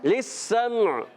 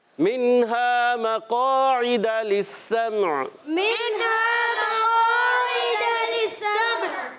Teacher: میم ساکن پھر عین بھی ساکن، عین کی آواز کلیئر ہوگی